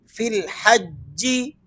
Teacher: بعض لوگ اسے فی الحجی یا کو کھینچ کر پڑھ دیتے ہیں، یاد رکھیں اس یا کو آپ نے یہاں نہیں پڑھنا